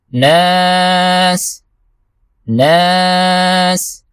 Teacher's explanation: آخر میں سین ہے، سیٹی کی آواز نکالنا ضروری ہے